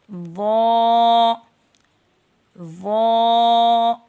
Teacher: زبان کی نوک جب اوپر کے جو سامنے کے دانت ہیں ان کے سرے سے ٹچ کرے تو وا ادا ہوتا ہے۔